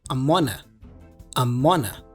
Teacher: we also connect the N for on with the article a which sounds like a schwas sound uh so we have amona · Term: connective speech